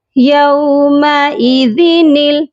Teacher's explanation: نون کو لام کے ساتھ ملا کر پڑھیں گے، درمیان میں خالی الف ہے، ہم اس کو نہیں پڑھیں گے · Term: نون قطنی